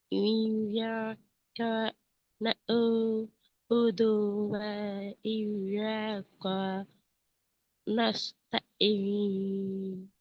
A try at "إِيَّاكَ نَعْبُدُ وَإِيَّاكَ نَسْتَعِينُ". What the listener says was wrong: இதுல நீங்க ஈயாக்க வ ஈயாக்க எல்லாம் நீட்டினீங்க என்ன? ஆனால் நஸ்தாயின்ல கொஞ்சம் கூடுதலாக நீட்டிக்கிறீங்க. அப்போ ஐயாக்கல பாருங்களேன், சுக்குன் செய்யப்பட்ட யாக்கும் சுக்குன் செய்யப்பட்ட யா, அலிப், சுக்குன் செய்யப்பட்ட எல்லாம் ஒரே தான் நின்று நாங்க அப்படித்தானே சொல்லிக்கிறோம். அப்போ இந்த ஈயாக்க, அதே நேரம் இந்த ஈயாக்க, இந்த நஸ்த ஐ எல்லாம் ஒரே நின்றணுமா, வித்தியாசம் இருக்குமா?